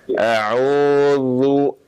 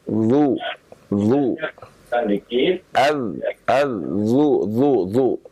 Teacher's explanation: bukan dari tengah lidah tapi dari ujung lidah bertemu dengan ujung gigi seri atas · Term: zal